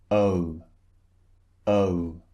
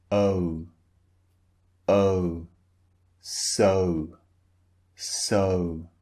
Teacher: shape of the mouth changes when you utter the sound so first the mouth is relaxed and then it's rounded · So it starts relaxed, just like this, and then it turns into a rounded shape, like O, O, so, so. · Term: two vowels squeezed together